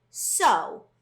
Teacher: what type of syllable is this this is an open syllable because that vowel is left open and it's not closed in and it makes the long o sound